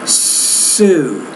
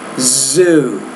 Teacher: The Z is a voice consonant, right? So the only difference in those pairs of words are the difference between the voiceless and the voiced consonant sound.